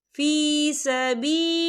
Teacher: यहाँ पर अल्लाह का नाम बारी पढ़ा जाएगा क्योंकि अल्लाह के नाम से पहले ज़ेर है।